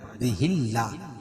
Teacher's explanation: اللہ کے لام سے پہلے زیر ہے، اللہ کا لام باریک پڑا جائے گا